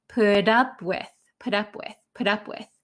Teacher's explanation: this t is going to become a d sound in american english